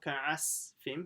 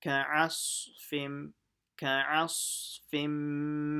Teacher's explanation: You have to show that it's a sad by making it full mouth.